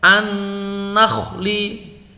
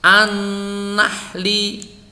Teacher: huruf kha itu ada di puncak tenggorokan. Huruf ha itu ada di tengah tenggorokan.